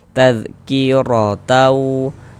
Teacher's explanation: Tanda baca fathah. Maka huruf ro dibaca tebal, dibaca tabkhim. Sehingganya pangkal lisan kita naik terangkat ke atas ketika kita mengucapkannya. Naikkan pangkal lidah kita.